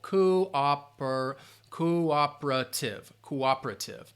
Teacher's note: They might say that O sound more in that first syllable, cooperative, but I'd say cooperative. That stress is on that second syllable